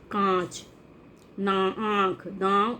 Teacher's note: अनुनासिक क्या होता है? इनका उच्चारण नाक और गले दोनों से होता है।